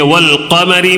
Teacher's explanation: والقمری میں یہ قاف جو ہے نا یہ قمری حروف کے ہونے کی وجہ سے الف کو چھوڑ دینا ہے، لام کو پڑھنا ہے